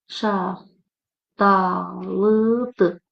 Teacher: Burda x t hərf birləşməsi olduğu üçün burda mən d kimi tələffüz elədim. Şaxtalıdır və dırdır xəbərli şəkilçisi tələffüz zamanı dü kimi tələffüz edilir.